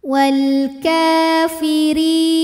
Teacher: cara bacanya Kaf panjang dua harakat · huruf ro dibunyikan secara tarqik sebab ro berbaris kasrah maka dibaca tipis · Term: Mad Thobi'i muqadar